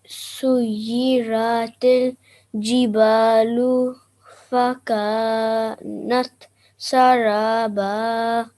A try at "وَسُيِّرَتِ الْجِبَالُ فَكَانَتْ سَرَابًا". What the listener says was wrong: Remember that ra with a fatha, then you have to make that a thick sound. So that would be saraba. Make your mouth round and say ra.